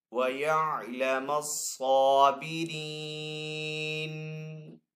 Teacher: صاد حروف مستعلی میں سے تو صاد کو یہاں پہ پر پڑھیں گے. صاد کے اوپر یہاں پہ کھڑا زبر ہے تو صاد کو ایک الف دو حرکات کے برابر کھینچ کر ادا کریں گے.